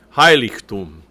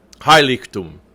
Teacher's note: So the accent is on that first syllable.